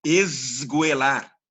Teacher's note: Ou seja, Zé. o S ele é vozeado como Z quando a consoante seguinte é vozeada